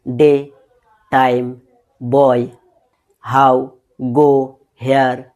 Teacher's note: two vowel sounds glided into one